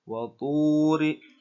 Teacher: terdapat huruf wawu mati yang didahului dengan harokat dhammah, yang mana dibacanya harus panjang 2 harokat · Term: tabi'i